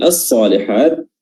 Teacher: huruf lamnya tidak disebutkan lagi dan langsung idgham, dimasukkan langsung ke huruf shad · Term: alif lam asy-syamsiyah